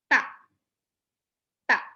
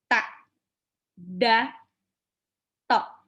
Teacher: Itu ujung lidah bertemu dengan 2 gigi seri atas. Kalau ta, dal, sama ta, itu ujung lidah menyepak 2 gigi seri atas. Jadi kayak disepak.